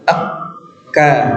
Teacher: Nah, keterangan guru kami huruf kaf itu ya agak di depan huruf qaf, dia menempel dengan langit-langit yang berdaging dan langit-langit yang keras, jadi agak ke depan. Jadi hurufnya itu syiddah ketika nempel, tapi pas lepas dianya lembut. Tekan Pak ya, agak kuat ya tekanannya syiddah.